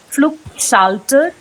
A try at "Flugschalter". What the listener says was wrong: It is not Flugschalter. It is Flugschalter. Flug. Proper U sound. Flugschalter. You will say Flug only when it is followed by double consonant.